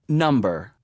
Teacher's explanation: دا اوله توري دوستانو دا فشار هم ورکول کیږي او په زوره هم ویل کیږي